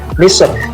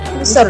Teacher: itu bisa dibaca misur sambil mulutnya maju ke depan, atau misr sambil mulutnya terbuka